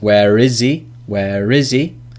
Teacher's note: we can link where because that ends in an R sound in most pronunciations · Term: linking